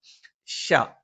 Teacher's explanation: ഷ നാവിന്റെ മധ്യഭാഗം മേലെ അണ്ണാക്കിലാണ്. മധ്യഭാഗം എന്ന് പറയുമ്പം നാവിന്റെ മധ്യഭാഗത്തിന്റെ 2 അറ്റങ്ങൾ മേലെ അണ്ണാക്കിൽ സ്പർശിക്കുകയും അതോടൊപ്പം തന്നെ അതിന്റെ ഈ ഒരു മധ്യഭാഗം അല്പം കുഴിഞ്ഞു നിൽക്കുകയും അതിലൂടെ കാറ്റ് സഞ്ചരിക്കുകയും ചെയ്യുന്ന ഒരു രീതിയാണ്.